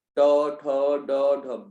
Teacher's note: मूर्धा में जीभ आपकी मुड़ेगी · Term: मूर्धन्य व्यंजन